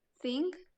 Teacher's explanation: The fricative is th, and it is voiceless